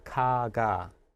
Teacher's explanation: Here we're between two vowels, so it sounds maybe more like a G. 네. And our first consonant sounds more like a K because 네.